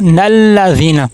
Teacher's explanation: اگلی آیت کے ساتھ اگر ملا کے پڑھیں گے تو نلذین ہوگا